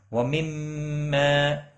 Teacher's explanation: میم مشدد پر غنہ ہوگا، الف مدہ بھی ہے، ایک الف کے برابر کھینچ کر پڑھیں گے۔